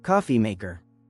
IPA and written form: ˈkɔː.fi ˌmeɪ.kər (Coffee maker)